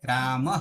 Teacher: યાની કંઠ છે હના જેવું ઉચ્ચારણ સ્થાન છે વિસર્ગ એટલે રામહ હના જેવું ઉચ્ચારણ સ્થાન છે એટલે કંઠ છે